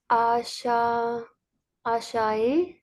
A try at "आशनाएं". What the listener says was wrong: आश नाए। नून का भी वहाँ पे नुक्ता है।